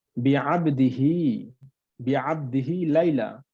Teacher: এখানে দেখেন হা এর নিচে খারা জের আছে, যার কারণে বিআবদিহি অর্থাৎ একালিফ পরিমাণ আমাদেরকে টেনে পড়তে হয়েছে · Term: একালিফ পরিমাণ টেনে